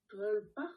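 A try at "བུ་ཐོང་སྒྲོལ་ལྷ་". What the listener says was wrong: Où est-ce que tu vois un djol? Qu'est-ce qu'il y a de djol là-dedans? C'est ni troll, ni troll, ni drôle, ni quoi que ce soit. C'est djel. Non, il n'y a pas de troll là.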